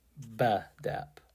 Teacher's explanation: I put the stress on the first syllable, and the E became eh, as in bread.